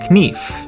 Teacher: a good example of this change is in the word knife in Middle English it was pronounced knif but after The Vowel Shift the K became silent